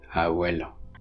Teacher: It's a voiced bilabial fricative. So in a word like abuelo, for example, the b is fricativized into v